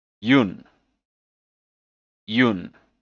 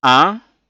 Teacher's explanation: the n is also a bit silent so it comes out as ah